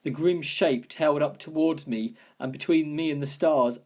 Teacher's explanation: There's a repetition of a sibilant sound here, this S sound being repeated